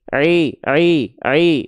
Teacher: Huruf hijaiyah apapun yang dia berharakat kasrah dia mesti dibaca dengan vokal dengan vokal i dengan jelas vokal i-nya. Jangan sampai vokal i-nya itu samar-samar kayak vokal e